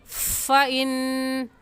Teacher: اوپر والے دانتوں کی نوک نیچے والے ہونٹ کی اندرونی تری مطلب جو ہمارا ہونٹوں کا گیلا حصہ ہے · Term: فا کا مخرج